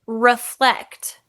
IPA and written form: rəflect (reflect)